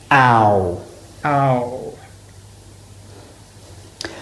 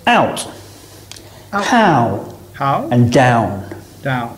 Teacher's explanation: Starting on the a and finishing on the u or oo.